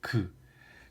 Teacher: 그러니까 이 위치에 막혔다가 공기가 빵 터지면서 나는 소리가 게 기역 소리입니다. 그래서 기역을 연구개를 막았다가 터트리며 내는 소리다.